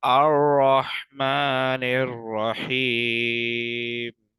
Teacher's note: रॉ के ऊपर जबर है तो रॉ को मोटा पढ़ेंगे